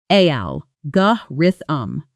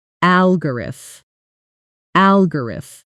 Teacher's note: Say it slowly with me. Stress lands hard on that very first syllable, al, and then the rest of the word tumbles downhill quickly and lightly after it. Many learners accidentally put equal stress on every syllable, which makes the word sound heavy and mechanical instead of natural.